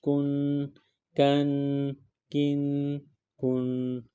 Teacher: اس کاف کو باریک پڑھیں گے